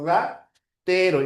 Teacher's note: La primera R es una vibrante múltiple, ratero, y la segunda es una vibrante simple, ya sería así.